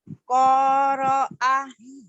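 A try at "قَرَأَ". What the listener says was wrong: Enggak ada yang panjang. Qoro'a.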